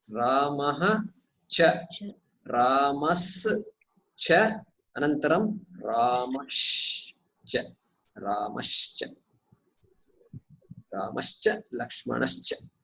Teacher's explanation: यदि परवर्णः चकारः छकारः अस्ति तर्हि विसर्गस्य सकारादेशः एव भवति प्रथमम्। अनन्तरं सकारस्य अपि तालव्यत्वं भवति। It will become a तालव्य।